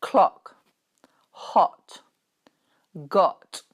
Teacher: the last sound within these vowels is a very open mouth, O, as in clock, hot, got. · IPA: ɒ